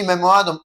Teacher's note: they are stressing the second to the last syllable